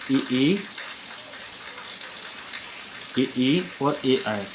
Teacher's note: जो अग्र स्वर हैं वो आगे जीभ के आगे वाले हिस्से से उच्चारित हो रहे हैं